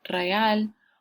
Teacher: aquí vemos un cambio de la E a una I en la pronunciación. Entonces, por este cambio, ya no es hiato, ahora es ditongo, real.